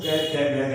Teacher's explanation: अगर मैं कै वर्ग को बोलूं कैसे लेके गै तक, तो आप लोग अगर इनका उच्चारण करोगे तो आपके गले से आवाज आएगी।